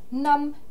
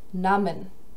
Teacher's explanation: Im Singularpräteritum haben wir ein kurzes A wie in nam, im Pluralpräteritum ein langes wie in nahmen.